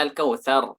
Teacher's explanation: Aqsal lisan tahta makhrajil qafi qalilan. Dari pangkal lidah juga, tapi di bawah makhraj qaf sedikit. Jadi makhraj qaf ini agak mengarah keluar. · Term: kaf